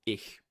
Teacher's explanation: But this sound in certain environments could have had a more frontward, position fricative, like h, as in German ich. Right, that's a palatal fricative